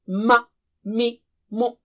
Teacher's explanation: Similarly, other harakat on the letter also show the makhraj, such as ma, mi, mu. So in all these cases, the lips are the makhraj of the letter mim.